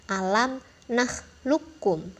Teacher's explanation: huruf qafnya ini ditiadakan teman-teman, diabaikan. Jadi kita masuknya ke huruf kaf dengan ditasydidkan. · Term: idgham mutaqarriban